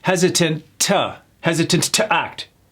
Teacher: Despite the abundant, no T, resources, some members were still hesitant to act. So that T on hesitant gets delayed and becomes the T of the T-O, the next word